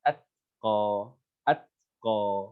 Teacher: Jadi ujung lidah kita tempel dulu di gusi gigi atas itu, kemudian baru diturunkan atqa, atqa. Nah, seperti itu. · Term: tak sukun